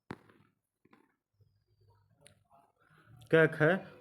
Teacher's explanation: क ख घोष वर्ण नहीं है